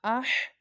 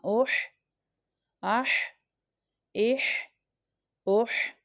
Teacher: اور یہ والی ہا ہے، اس کو باریک ہا بھی کہتے ہیں. دس ہا comes from the middle part of the throat, یعنی یہ حلق کے درمیانے حصے سے ادا ہوتی ہے. حمزہ، ہا، فتحہ اح، حمزہ، ہا، کسرہ اح، حمزہ، ہا، دمہ اوح، اح، اح، اوح.